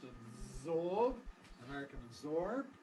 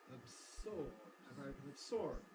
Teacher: We can either make the fricative voiced, absorb, American absorb, or we can make it voiceless, absorb, American absorb.